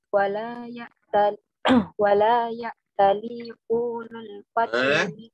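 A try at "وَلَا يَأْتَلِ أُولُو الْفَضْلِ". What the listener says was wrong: U-nya pendek. Wala ya'tali ulul fadli minkum.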